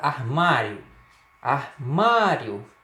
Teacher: encontro da semivogal I com a vogal O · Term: Ditongo crescente